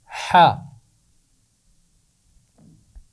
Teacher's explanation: تو اس کا مخرج بہت ہی آسان ہے، یہ بھی عین کے پاس ہی رہتا ہے، گلے کے درمیان میں۔ تو حا کی آواز بھی گلے کے درمیان سے ادا ہوتی ہے۔ عین اور حا دونوں کی آواز گلے کے درمیان سے ادا ہوتی ہے۔